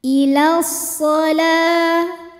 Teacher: karena huruf lam berbaris fathah panjang, maka lam dipanjangkan 2 harokat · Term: mad tabi'i muqaddar